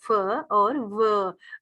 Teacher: आप बोल के देखेंगे, आपका फ और व आपको बताएगा कि ऊपर वाले दांत नीचे वाले होंठ से टच करेंगे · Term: लेबियोडेंटल